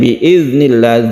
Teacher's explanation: zalnya ini bukan qalqalah karena bertitik ya, bertitik, jadi jangan dipantulkan